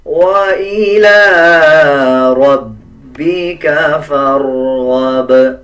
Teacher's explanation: لام کے اوپر کھڑا زبر ہے، 1 سیکنڈ لمبا کر کے پڑھا جائے گا